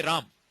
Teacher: So now you see, when you say Rama, see in Hindi generally what happens, you drop the last swara. You say Ram, right?